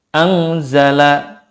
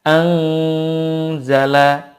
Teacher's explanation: Jadi gunah saja tidak cukup, tetapi harus dipanjangkan 2 sampai 3 harokat. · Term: gunnah kamilah